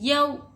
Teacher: वाउ साकिन से पहले हरकत ज़बर रहा तो वोलिन होगा। वोलिन को हम जल्दी पढ़ेंगे, ज़रा भी नहीं खींचेंगे